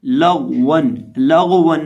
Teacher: गौन को बिना हिलाए पढ़ा जाएगा और मोटा करके पढ़ेंगे और इसी तरह वाव को होंठों को गोल करके पढ़ेंगे